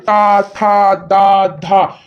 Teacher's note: ता वर्ग का उच्चारण स्थान है ता, था, दा, धा। तो ता है, तो ता जब बोल रहे हैं तो दांतों पे जबान जाके टकरा रही है। ता, था, दा, धा, यानी कि दंत हो जाता है।